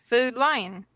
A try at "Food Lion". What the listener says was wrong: it sounds like you're saying food line like you're standing in a line to get food